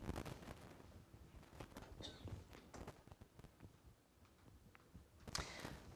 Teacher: we tend to delete the th